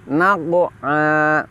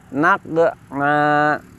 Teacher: qaf huruf tafkhim tadi rumusnya adalah harus dibaca dengan lidah terangkat